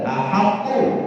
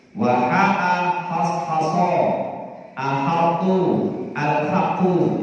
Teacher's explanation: Kemudian pada lafaz ahatu, haknya dibaca tartib biasa, tipis, jangan dibaca tebal.